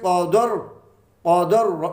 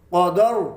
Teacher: کاف جو ہے مستعلیہ میں سے موٹا اور را بھی موٹی پڑھی جائے گی